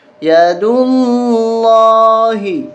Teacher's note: یہاں پر لفظ اللہ موٹا ہوگا اس لیے کہ اس سے پہلے والے حرف پر پیش ہے